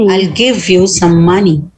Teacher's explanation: do not stress on i'll